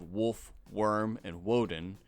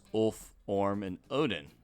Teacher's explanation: Old Norse, as a rule, typically loses the W from their Germanic counterparts.